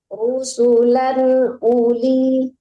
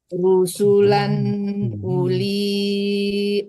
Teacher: jangan dipanjangkan un-nya dan juga jangan terlalu lama tertahan di lan ya